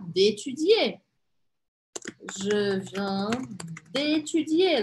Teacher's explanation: Começou com vogal o verbo, tem que tirar o e do de